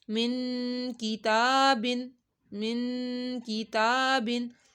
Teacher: تابن، کیونکہ تا کے اوپر کھڑا مد ہے تو تا کو ایک الف کے برابر کھینچنا ہے اور نون کے اوپر گنہ کرنا ہے